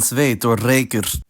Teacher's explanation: both of these say [ɛi̯], like in sveit or reykur